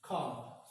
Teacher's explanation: when we have single word and R sound is followed after vowel sound, the pronunciation of this R sound will be dropped. But when the next word, if the next word starts with a vowel sound, we pronounce the R sound.